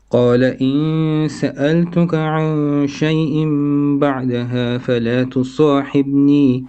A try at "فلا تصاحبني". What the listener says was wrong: bit of قلقلة on the ba.